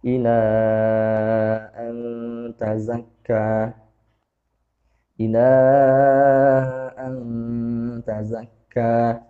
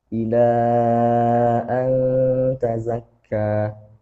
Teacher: Mad jaiznya dipanjangkan ya, jangan terlalu cepat. Ya tadi karena sudah memulai dengan yang apa namanya membacanya dengan mungkin ukuran kecepatan ukuran durasinya sekitar 4 harokat ya.